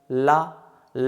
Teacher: जैसे ला बोलिए, ला, ला हम बोल रहे हैं तो देखिए जो जीभ है हमारी वो मसूड़े से टच हो रही है, बाकी बगल से वायु निकल जा रही है। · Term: पार्श्विक व्यंजन